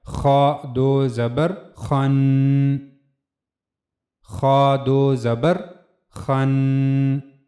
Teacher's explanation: تو سب سے پہلے خا، دو زبر خن، چونکہ یہ پر پڑھے جانے والے حروف میں سے ہے خا، تو اس لیے آواز کو پر رکھا جائے گا